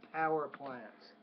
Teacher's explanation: a little bit more air on the PE power plants